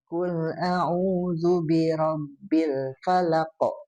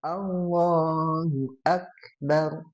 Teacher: Kalau qaf mah ketika disukunkan teh dia mantul. · karena qaf dan kaf satu makhraj, sama di pangkal lidah gitu. Cuman bedanya pas ketika disukunkan.